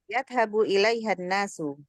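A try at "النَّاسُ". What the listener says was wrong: An-nas ada tasydid ya. Syaddah.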